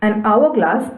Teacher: the word begins with a consonant but the sound is of vowel, that is h is silent